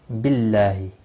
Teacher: اللہ کا لام باریک پڑا جائے گا زیر کی وجہ سے، اور اس کے اوپر کھڑی زبر بھی ہے، ایک الف کے برابر کھینچ کر پڑھیں گے، اور وقف کی صورت میں ہا ساکن پڑھیں گے، ملانے کی صورت میں ہا کی حرکت کو بھی پڑھا جائے گا۔